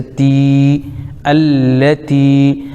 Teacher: تا کے نیچے زیر لیکن یا ساکن تو یا مدہ ہو جائے گا، ایک الف کھینچیں گے